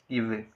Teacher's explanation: கீழ் இதலும் மேல்வாய் பல்லும் இணைவதால் பிறக்கும் எழுத்துக்கள்